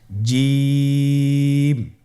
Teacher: এর মাখরাজ হলো জিহ্বার মধ্যখান, তার বরাবর উপরের তালুর সঙ্গে লাগিয়ে উচ্চারিত হয়।